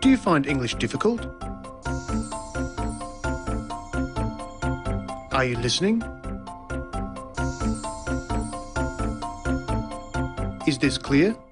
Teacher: First, there's the high or rising tone used for asking a yes-no question.